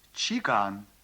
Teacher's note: к произносится близко к звуку г